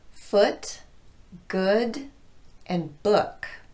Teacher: with the short uh sound the lips are much less protruded less rounded and the tongue is more relaxed